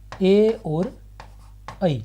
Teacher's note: ए और ऐ इनका कंठ और तालु दोनों से उच्चारण होता है। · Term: कंठ तालव्य